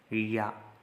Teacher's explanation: या जब आप बोलेंगे तो आपकी जबान तालु को स्पर्श करेगी।